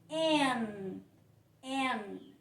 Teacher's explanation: é no céu da boca, na região anterior do céu da boca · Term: ponto N